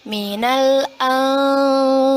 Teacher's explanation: Nun sukun bertemu dengan huruf fa. Hukum bacaannya ialah ikhfa. Kita baca dengan samar-samar dan ditahan 2 harokat. Minal anfusi wathamarat wa basyiris sabirin alladzina idza asabathum musibah qalu inna lillahi wa inna ilaihi raji'un.